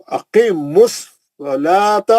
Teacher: स्वाद मोटा पढ़ेंगे, मुस्तालिया का है